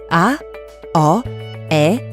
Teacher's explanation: А, О, Е са широки гласни, защото се изговарят с широко отворена уста.